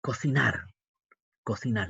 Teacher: La mayor fuerza de voz está en ar.